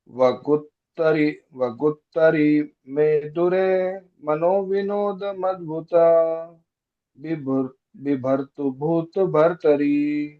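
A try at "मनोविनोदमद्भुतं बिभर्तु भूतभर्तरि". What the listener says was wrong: Very good, very nice, very nice.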